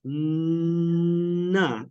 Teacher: With na, your tongue is touching your alveolar ridge and it's closing it off. Na, and the sound is coming out your nose. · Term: nasal sounds